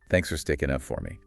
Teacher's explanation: For often reduces to fur.